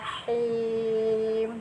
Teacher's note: jadi H itu ada anginnya